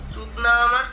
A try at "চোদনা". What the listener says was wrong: চুদনা চুদনা নয়, ওটা চুদনা হয় না, ওটা চোদনা হয়। ঠিক আছে, উচ্চারণে ভুল। যাই হোক, তুমি বাঙালি আমি জানি, উচ্চারণে একটু ভুল হয়।